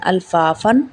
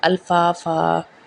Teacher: حمزہ زبر لام ال، فا الف زبر فا، فا دو زبر الف فن، الفافن. یہاں پہ جب ہم وقف کریں گے تو ہم دو تنوین کی جگہ پہ ایک زبر کو ادا کریں گے